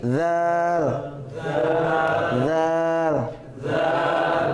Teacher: Za ini tempatnya dengan sa sama ya. Ujung lidah bertemu dengan ujung gigi seri atas.